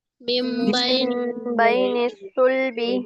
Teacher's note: میم نون زیر من نہیں پڑھیں گے، میم کو میم سے ملائیں گے، نون ساکن کی آواز ختم ہو جائے گی اور نون ساکن کی آواز کو میم سے بدل کر پڑھیں گے.